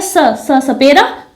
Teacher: जब हम स का उच्चारण करते हैं तो हमारी जो जीभ है वो ऊपरी जबड़े के दांत को अंदर से स्पर्श करती है।